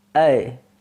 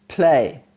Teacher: the tongue glides from half open to half close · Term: closing diphthong